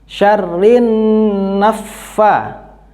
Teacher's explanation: Syarrin termasuk hukum bacaan gunnah. Bacanya masuk, ditekan dan mendengung selama 1,5 alif. · Naffa masuk, ditekan tapi tidak mendengung.